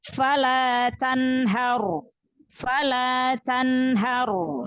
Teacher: Takrir juga ya, sedikit bergetar, getaran yang ringan. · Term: ro sukun